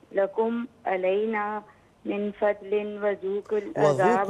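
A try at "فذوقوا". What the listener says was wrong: نہیں ہے فا ہے فذوقل दूसरा ये है कि एक लह में पढ़ा करें, तोड़ तोड़ कर ना पढ़ें।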